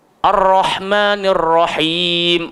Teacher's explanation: sifat ra ni mesti tikrar ataupun takrir, dia bergetar.